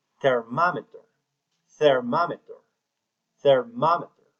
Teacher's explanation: The second syllable is stress. Thermometer.